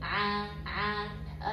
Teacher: jahr itu nafas yang ditahan berarti ketika melafalkan huruf Ain nafas kita ditahan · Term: sifat jahr